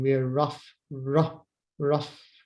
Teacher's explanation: usually the r is silent in british english but here in this example it's not we're rough so it's actually the ra the r sound this